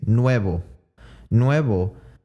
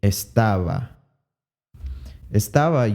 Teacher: nuevo has a v in it but it uses the bilabial approximant